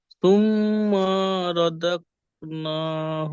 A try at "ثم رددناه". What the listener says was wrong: ثم টান হয়ে গেল কেন ثم رددناه أسفل সাফিলিন সিন খাড়া যাবার সা খাড়া যাবার আলিম মাদ্দার সমান এক আলিফ টান দেবেন সিন খাড়া যাবার সা ফাজির ফি সাফি লাম ইয়া নুন জের লিন এখানেও মাদ্দা আরি জকফি সাফিলিন